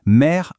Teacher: Faire, on entend aussi le re. Eh bien, c'est cette consonne finale bien audible qui ouvre le son du E juste avant